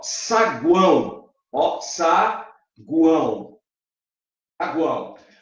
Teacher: em saguão, o tritongo é nasal, porque tem o símbolo de nasalização.